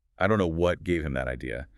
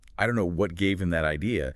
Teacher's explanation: The tonic prominence lands heavily on the word that. It does not land on idea.